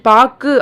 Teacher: இறுதியில் பாக்கு அப்படின்றத மட்டும் ஒரு மாத்திரைக்கு பதிலாக அரை மாத்திரை அளவே ஒலிக்கிறது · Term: குற்றியலுகரம்